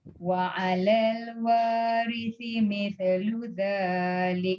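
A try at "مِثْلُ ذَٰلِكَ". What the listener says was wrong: Mith jangan mitha. Mithlu dhalik.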